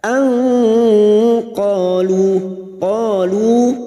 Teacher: Anqalu, qalu, karena kita memilih wakaf di sini maka sama-sama 2 harokat kita panjangkan, fathah diikuti alif mad tabi'i, lu duma diikuti wawu sukun, dan kita wakaf di sini 2 harokat kita panjangkan